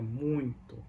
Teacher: So you might, when the word muito is supposed to say muito, but we pronounce like a muito, and it sounds like have an N in the middle of the word, but it doesn't. It's just a nasalized.